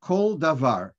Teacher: So the Sfardim, a regular komet, they pronounce a, but a kometz koton, they pronounce o. So they will say kol davar.